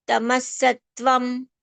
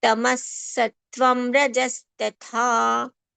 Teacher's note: Whenever tatha comes, we have to be careful because ta is alpapran and tha is the succeeding mahapran sound